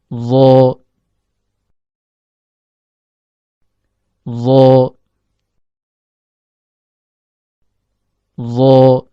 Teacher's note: Huruf dha keluar dari ujung lidah yang bertemu dengan ujung gigi seri atas.